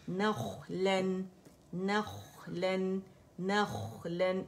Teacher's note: इस्तिआला है ख्वा के अंदर और आवाज़ चलेगी, मोटा भी है